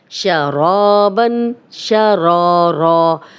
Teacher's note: شرابن، شرا، را، اب را کو موٹا پڑھیں گے، را الف مدہ بھی ہے، 2 حرکات لمبا کریں گے